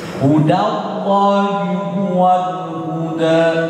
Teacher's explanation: Itu enggak sengaja kalau orang terbaca hudo. Dipanjangin jadi do, seharusnya huda